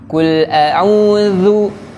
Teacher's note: Huruf zal makhrajnya ujung lidah bertemu dengan gigi seri atas.